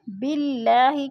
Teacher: باللہ کی اللہ باریک پڑھی جائے گی، اس لیے کہ اللہ سے پہلے لفظ با کے نیچے زیر ہے تو اللہ کو باریک کر کے پڑھیں گے۔